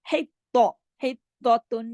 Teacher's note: ہاں کی آواز گلے سے، لیکن تو موٹا اور تو پہ تشدید ہے